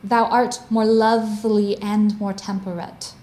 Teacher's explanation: lovely bridges between two feet of the meter and as a result if you slow it down you have to linger over the word lovely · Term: iambic pentameter